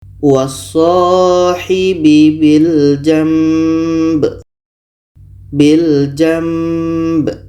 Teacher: Bunyi nun kita tukar kepada mim dan di sini ada dengung. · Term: iklab